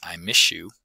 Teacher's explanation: As a result, the s, the s sound, is often produced with the palatal gesture of the y, resulting in something that seems more like the palatal fricative sh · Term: assimilation